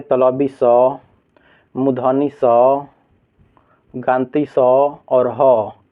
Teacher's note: जिस वर्ण के उच्चारण में रगड़ घर्षण उत्पन्न होता है उसे क्या कहते हैं, ऊष्म व्यंजन कहते हैं